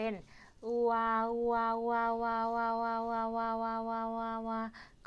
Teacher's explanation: เอาสระอูประสมกับสระอา นะคะเป็นอวาวาวๆๆๆๆๆๆก็กลายเป็นสระอัวนะคะเพราะฉะนั้นนั้นสระประสมก็คือเกิดจากการนำสระ2ตัวมาประสมกันค่ะก็เป็นสระเอียสระเอือแล้วก็สระอัวดังนั้นหลักการจำเราจึงจำง่ายๆในคำศัพท์คำว่าเมียเบื่อผัวนั่นเองค่ะเท่าง่ายๆนะคะเมียเบื่อผัวค่ะ